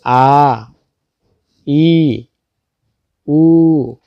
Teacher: হওয়ার সময় একটি বাগযন্ত্রের সাথে আরেকটি বাঘযন্ত্রের সংমিশ্রণ হয় না বা ভেতরের কোন অঙ্গ একটির সাথে আরেকটি সংস্পর্শ হয় না একদম খালি জায়গা থেকেই উচ্চারিত হয়ে আসছে বাতাসের মাধ্যমে এজন্য মদের তিনটি হরফ মুখের ভিতর খালি জায়গা থেকে উচ্চারিত হয়